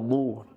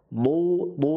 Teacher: ketika diucapkan pangkal lidah tengah lidah naik ya. Bu sehingga terdengarnya tebal seperti itu. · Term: makhrajul dot